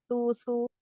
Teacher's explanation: ujung lidah menyentuh ujung gigi seri atas ya, 2 gigi seri atas